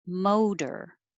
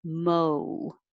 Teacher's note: the american o is not just o but starts with a more uh and ends with an oo mo and it takes longer so you have to slow down